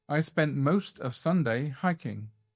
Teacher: vous voyez comme il ne met pas l'emphase sur la petite préposition de, of, comme il ne met pas l'emphase sur I